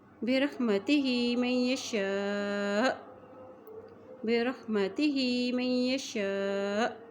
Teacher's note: یہاں وقف ہم کریں گے تو حمزہ ساکن ہو جائے گا، جب حمزہ ساکن ہو جاتا ہے تو اسے ہم چھٹکا دے کے پڑھتے ہیں